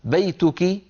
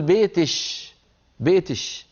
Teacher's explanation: كاف المخاطبه المؤنثه يقلبونها شينا · في شيء اسمه عند العرب في زمن النبوة اسمه الكشكشة، وعند قبائل أخرى اسمها الكسكسة، يعني كاف المخاطبة المؤنثة يقلبونها شينا، تصوروا، يعني مثلا بدل أن يقول للأنثى بيتك يقول بيتش، بيتش، أو بالسين يقول بيتس، بيتس. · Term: الكشكشه